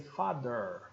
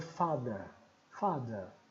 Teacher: Curioso que aqui ele está com o R entre parênteses. É porque se você gosta da versão americana, você pronuncia o R. Se você não gosta, você para aqui no schwa. O britânico diria father.